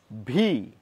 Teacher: ভি উচ্চারণ করছি কিন্তু দুটো ঠোঁট দিয়ে